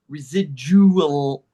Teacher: the A really has no sound. We go from Jew to the L